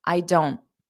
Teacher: you put your mouth in the T position don't but then you don't push out the sound